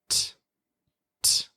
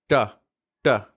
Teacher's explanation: American English speakers have the tip of their tongue touching the bump just behind the teeth